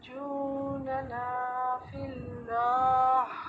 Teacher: ننا میں الف مدہ ہے جو آپ ڈراپ کر رہی ہیں